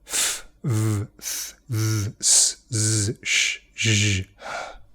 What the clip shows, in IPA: f,v,θ,ð,s,z,ʃ,ʒ,h